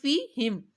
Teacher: فا کے نیچے زیر ہے تو فی کو لمبا نہیں کرنا